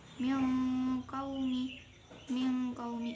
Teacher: ini bacaan ikhfa sebab nun sukun bertemu qaf. Cara membacanya dibaca dengung.